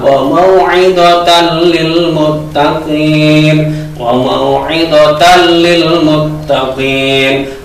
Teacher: Nun tidak mendengung tapi langsung ke huruf lam. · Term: idgham bila gunna